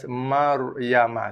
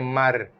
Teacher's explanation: ra sukun, sebelumnya ada huruf mim yang berbaris atas. Maryama. So, ra dibaca tebal.